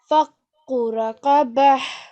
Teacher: Try and make that h sound at the end.